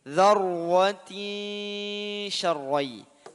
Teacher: tin, kasratain, setelahnya ada shin, ikhfa haqiqi.